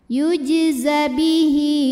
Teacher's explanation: huruf setelahnya bukan Hamzah maka ha dipanjangkan dua harakat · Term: Mad Silah qasirah